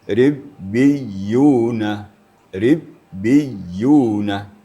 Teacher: rnya tipis karena sebelum ra itu baris bawah dan ada ya sukun